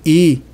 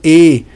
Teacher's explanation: da vogal i e da vogal e quando eu digo i a língua está pra frente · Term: anterior